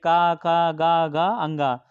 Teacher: कवर्ग जितने भी है वो कंठ ध्वनियां